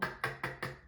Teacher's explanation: Não tem vibração aqui, tá? É só um k, k, k, k. É só um ar.